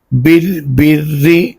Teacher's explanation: یہ را جو ہے اس کو پر نہیں پڑھیں گے بلکہ باریک ہی پڑھیں گے، کیونکہ را کے نیچے زیر آ جائے تو یہ باریک پڑھا جائے گا.